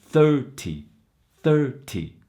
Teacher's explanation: when you're dealing with the tens number the syllable stress is in the beginning first syllable